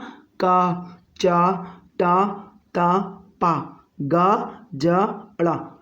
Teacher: जिन व्यंजनों के उच्चारण में मुख से कम हवा निकले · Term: अल्प प्राण